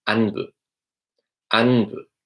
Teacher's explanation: there's a sound in Tamil which is in between a P sound and a B sound